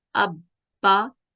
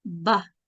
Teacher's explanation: जहां पर होंठ मिले हैं, जहां पर होंठ आके आवाज होंठों पे ठहरी है, यही बा का मखरज है